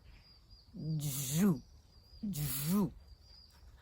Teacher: звук дж називається твердим приголосним і ніколи не буває м'яким